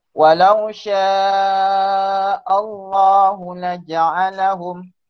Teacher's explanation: Kenapa panjang hu? Hu pendek je.